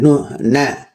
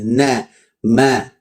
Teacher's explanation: namanya gunah anqas sedikit ya na coba huruf nun baca n na berharakat bisa enggak lepas dari hidung enggak bisa na pasti ada kadar gunahnya di sini na ma ya kan pasti ada nah ketika dia berharakat pun itu ada kadar gunahnya nun dan mim